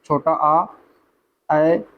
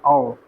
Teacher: अर्ध विवृत स्वर जिसमें क्या होता है कि इसमें मुख द्वार आधा खुलता है